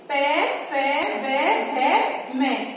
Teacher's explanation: प वर्ग के अंदर कौन कौन से व्यंजन आते हैं, प, फ, ब, भ, म और इनका जो उच्चारण स्थान है वो है होठ